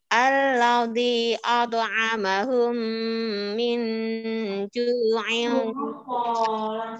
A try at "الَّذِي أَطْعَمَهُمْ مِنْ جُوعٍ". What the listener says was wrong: Ulangi, Bu. Alladzi 4 harokat.